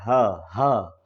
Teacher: एक नाद एक झंकार पैदा होती है वाइब्रेशन होता है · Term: घोष वर्ण